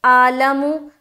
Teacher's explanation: जिनका आइन अदा नहीं होता वो पढ़ेंगे आलमु